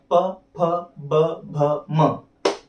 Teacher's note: इनमें आपके होठ चिपकते हैं, दोनों होठ चिपकते हैं आपस में, तो इन्हें कहा जाता है ओष्ठ्य व्यंजन।